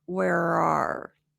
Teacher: Roar, roar. The tongue goes back. It activates that American R placement.